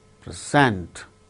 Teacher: Present, when it is used as verb, the second syllable gains stress, like present.